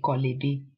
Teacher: you can say kolebe, because the two vowels at the end sort of merge. And so we won't say koloebe, but kolebe.